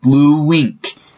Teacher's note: in the middle so it sounds like blue wink bln there is a little bit of a w in between the two instead of a space